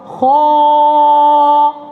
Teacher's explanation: Buka lebih sikit kha. Rasa ni bahagian pangkal lidah tu terangkat.